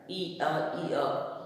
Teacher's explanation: और यह जो है किससे बनता है, ई और आ के बीच की जो ध्वनि, जब हम ई और आ का उच्चारण ई अ जल्दी जल्दी बोलेंगे तो उसमें हमें य सुनाई देता है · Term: अर्ध स्वर